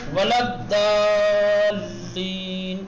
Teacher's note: یہ نہیں کہ ملایا بالکل داد نہ. زبان کے کنارے کو دانت سے ملانے کے بعد پرحجم اور موٹا بنا کر کے ادا کرنا ہے